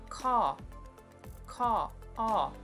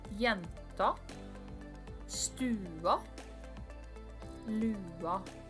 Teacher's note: The vowel A in Norwegian is generated from the bottom of your throat. It is the end sound of the cawing sound crows make.